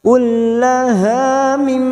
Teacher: mim yang bertasdid gunnah musaddadah kita dengungkan selama 3 harokat